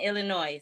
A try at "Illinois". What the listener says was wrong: Illinois. Listen, I get all words wrong all the time, but it's Illinois. The S is silent.